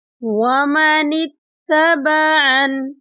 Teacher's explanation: یہاں پر وقف کریں گے، وقف کی صورت میں نون کے نیچے زیر کو نہیں پڑھیں گے بلکہ نون ساکن ہو جائے گی